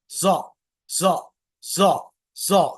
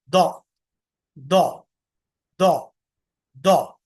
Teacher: Actual इसका जो सही तरीका है पढ़ने का, वो हल्की सी डी वाली साउंड के साथ है, लेकिन मोटा करके पढ़ेंगे।